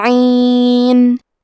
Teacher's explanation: عین کی ادائیگی حلق کے درمیان والے حصے سے ہے